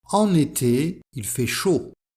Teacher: avec la liaison entre en et été.